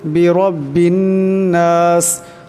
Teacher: বিরব্বিন এখানে রার উপর জবর আছে, তাই রাকে মোটা করিয়া পড়তে হবে। এই বাই নুনকে ধরবে, নুন মুশাদ্দাদ, তাই নুন মুশাদ্দাদকে কালে পরিমাণ গুণনা করিয়া পড়তে হবে।